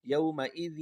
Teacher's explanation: یومئذ زیر کی آواز ہے تو زیر کو واو کے ساتھ ملا کر غنہ کر دیں